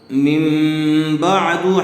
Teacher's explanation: تنوین یا نون ساکن کے بعد با آ جائے تو تنوین یا نون ساکن کو میم سے بدل کر غنہ اور اخفاء کے ساتھ پڑھیں گے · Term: اقلاب